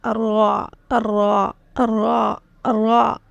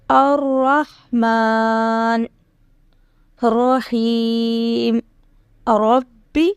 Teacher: زبان کے کنارے کی پشت جب اوپر والے اگلے 3 دانتوں کے مسوڑوں سے لگے تو را ادا ہوتا ہے